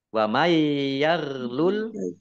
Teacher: nun sukun bertemu dengan huruf ya idgham bi gunnah masuk dengan mendengung, yaknya ditahan mendengung.